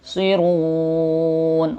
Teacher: Sirun, wawnya matobi dan nya mad arid sukun, dibaca 4 sampai 6 harakat karena kita mau berhenti